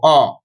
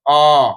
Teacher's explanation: যখন অ বলবো তখন ১ সেকেন্ডে কম সময়ে বলবো অ, যখন আ বলবো তখন সেই সময়টাকে দ্বিগুণ করব